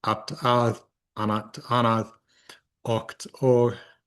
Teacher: T's or K's at the end of those are going to become eths or G's, respectively, in modern Icelandic.